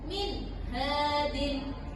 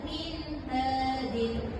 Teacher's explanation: Nun sukun bertemu dengan huruf ha, maka harus dibaca jelasnya. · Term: idgham halqi